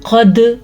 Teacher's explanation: جھٹکا دے دیا کیونکہ دال آیا ہوا ہے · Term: قلقلہ